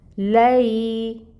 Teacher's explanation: لام کے اوپر فتح کی حرکت ہے اور آگے یائے ساکن ہے۔ یائے ساکن سے پہلے فتح کی حرکت، مطلب یہاں پر لین کا قاعدہ ہو رہا ہے، لین کو نرمی سے ادا کیا جاتا ہے۔